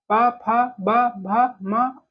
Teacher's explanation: दोनों ओठों के परस्पर मेल से जिनका उच्चारण होता है, उन्हें हम ओष्ठ व्यंजन कहते हैं।